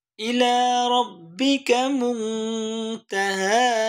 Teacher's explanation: من ذكراها إلى ربك منتهاها দুটাই হা হা দুটাই একালিফ টান তবে এখানে আমরা ওয়াকফের কারণে 3 আলিফ টান দেব